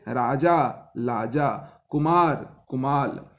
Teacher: मागधी में र ध्वनि नहीं है, उनके स्थान पर ल मिलता है।